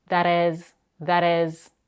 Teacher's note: because the t is between two vowels it's flap it sounds like a very quick or D that is that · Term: flap T